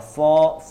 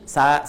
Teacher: kalau mau mengucapkan sod, seperti kita mengucapkan o, ya, o, cuma ujung lidahnya ini agak menyentuh, ya, hampir menyentuh ke gigi seri bagian bawah.